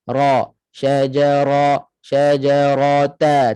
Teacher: Ra muka masam sedikitlah. Pangkal lidah naik tebal. Takrir 1 kali getaran.